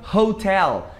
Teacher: Então repara que o H já tem um som que raspa a garganta.